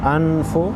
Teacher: हमज़ा नून ज़बर अन, फ़ा पेश फो, नून साकिन को गुन्ना करेंगे।